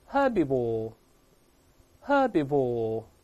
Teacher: 英式发音的前面的▁h▁发音都是哈哈